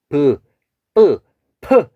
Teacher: 프 하면은 공기가 확 나가요. 그래서 이 소리를 예삿소리, 그 다음에 된소리, 거센소리라고 부르고 있습니다.